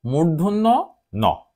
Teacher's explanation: মূর্ধন্য ন অর্থাৎ এটি আমাদের মূর্ধায় জিভ স্পর্শ করে উচ্চারিত হয়